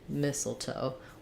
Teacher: is it is just missile so that sounds like missile toe mistletoe with first syllable stress